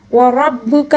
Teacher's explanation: را کو بھی پر پڑھیں گے، کاف کو باریک پڑھیں گے